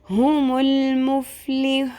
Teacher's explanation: اور یہاں پر ہم نے ساکن سے پیچھے دیکھا تو وہ واو مدہ ہے مد اصلی ہے تو اس کو بھی ہم 3 الف کے برابر لمبا کھینچیں گے